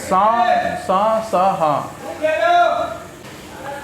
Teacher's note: इसे बोलने में हवा को संघर्ष करना पड़ता है, इसलिए श्वास को संघर्ष करना पड़ता है, इसलिए इसे संघर्षी व्यंजन बोलते हैं।